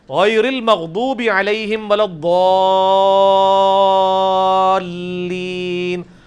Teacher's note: ولضالین میں جو الف کے اوپر بڑی والی مد ہے وہ 5 الف تک کھینچی جاتی ہے, یعنی 10 حرکات کی لینتھ کے برابر. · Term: مد واجب